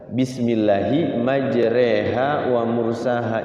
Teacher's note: tulisannya majroha, tapi dibacanya majreha, namanya imalah.